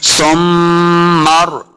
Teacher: मीम के साथ मिलाना है सा को, मीम मुशद्दद है, गुन्ना करेंगे।